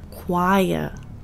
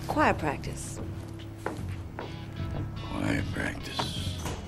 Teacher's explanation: Since is British, he doesn't pronounce the r at the end